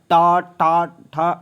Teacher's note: ट वर्ग को मूर्धन्यता बोलते हैं, मूर्धा से जो टा टा ठा ऐसे निकलता है